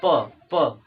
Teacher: जब हम लोग प बोलते हैं तो प में ये जो हमारा दोनों ओंठे हैं ये क्या करते हैं, एक दूसरे से टकराते हैं। तो प का उच्चारण कहाँ से होगा, तो ओष से हो जाएगा।